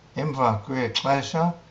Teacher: these words are followed by the link kwa, again ending on a, of course, and this a blends or merges with the following, with the first vowel